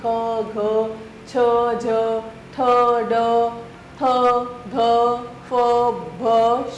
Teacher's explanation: इनके उच्चारण में हकार जैसी ध्वनि विशेष रूप से रहती है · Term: महाप्राण व्यंजन